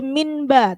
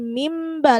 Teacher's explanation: Jadi gak boleh minba, tapi mimba langsung masuk ke huruf ba. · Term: iqlab